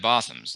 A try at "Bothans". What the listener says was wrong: It's Bothans, not M. N is in net.